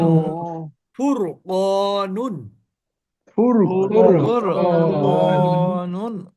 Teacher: ফুর র সাকিন তার পূর্বে ফা এর উপরে পেশ তার মানে র সাকিন তার পূর্বে জবর অথবা পেশ হলে সে র টাকে মোটা করে